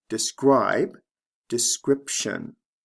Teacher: the B becomes a p sound before the T